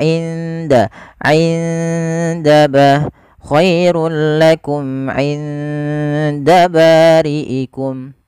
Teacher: Dal hurufnya, makhrajnya adalah ujung lidah kita bertemu dengan pangkal antara gigi seri atas dan gusi atas, sehingga dia di belakang keduanya. · Nun sukun ketemu dengan huruf dal itu harus disamarkan kepada makhraj daripada huruf dal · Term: ikhfa